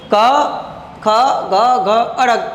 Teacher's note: કંઠ એટલે આપણું ગળું, બરાબર. ગળામાંથી બોલાય છે એટલે એને કંઠવ્ય કહેવામાં આવે છે